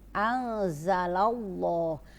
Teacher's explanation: nun sukun ketemu za adalah ikhfa, tidak dibaca idhar tetapi ini harus ada dengung. Anzalallah, tidak dibaca anzalallah tapi anzalallah.